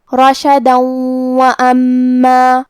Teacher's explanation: اگر ہم یہ آیت کو اگلی آیت کے ساتھ ملا کے پڑھیں تو حرف الواو کلمت وَأَمَّا حروف الادغام بغنہ میں سے ہے، اور ادغام کا معنی ہے حرف کو حرف میں داخل کرنا، تو ہم یہ تنوین کو واو میں ملا کے غنہ اور تشدید کے ساتھ ادا کریں گے